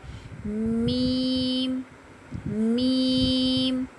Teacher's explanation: बंद होठों का खुशकी वाला हिस्सा आपस में मिलने से मीम अदा होता है।